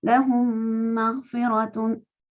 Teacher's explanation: todo como si fuera una sola palabra y insistiendo acá con shadda en la segunda mim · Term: idgham